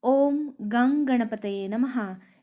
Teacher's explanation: क वर्ग में अंग ये अनुनासिक होता है, इसलिए इस उदाहरण में ओम गंग गणपतये नमः इस प्रकार से अनुस्वार का उच्चारण होगा